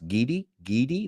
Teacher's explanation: realize gidi is not the same as giddy g-i-d-d-y yeah well your R sounds like a d to us